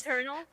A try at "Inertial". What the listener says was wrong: it's not eternal. It's inner.